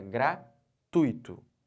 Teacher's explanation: Eu estou botando toda essa sílaba aqui, ó, o tui, como sílaba tônica.